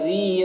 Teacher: ذی میں یا مدہ ہے، ایک الف کے برابر کھینچیں گے۔